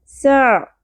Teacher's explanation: عین کے مخرج کا خیال کریں، وسط حلق سے نکالنا ہے باریک آواز سے